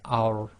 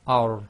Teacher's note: So that's thicker. You've got to lift up the back of the tongue to do the tafkhim. Now in English here we've put arrow, but you've got to add the thickness to it, as in the heaviness to it.